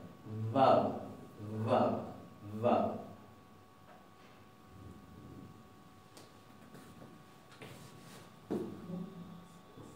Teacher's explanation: es una B corta que es labiodental, como nosotros pronunciábamos antes en un castellano más clásico y más tradicional, pero más suave. Vab, vab, vab.